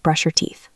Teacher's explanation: The sh in brush slides into the Y of your. It almost sounds like brush your teeth.